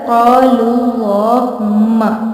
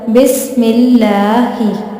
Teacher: अल्लाह के लाम से पहले जब ज़ेर आ जाएगी तो लाम बारीक पढ़ा जाएगा। मिसाल के तौर पर बिस्मिल्लाहि, देखें यहाँ पे लाम से पहले ज़ेर है मीम के नीचे, तो यहाँ पे आपने लाम को बारीक पढ़ना है।